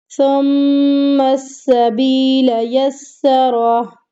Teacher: میم پر غنے کے دائرے کو کمپلیٹ کرنا ہے، میم کو سین کے ساتھ مضبوطی کے ساتھ ملانا ہے، سختی کے ساتھ۔